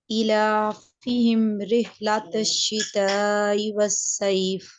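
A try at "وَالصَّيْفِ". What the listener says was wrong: ये देखें, सईफ नहीं है, ये सईफ नहीं है, साइफ, साई। ये सईफ नहीं है, साइफ है, साइफ। सा के ऊपर जबर वाजे होना चाहिए।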